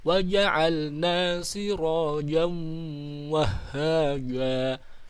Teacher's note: tanwin bertemu waw, idgham bi gunnah, idgham dengan gunnah, dengan dengung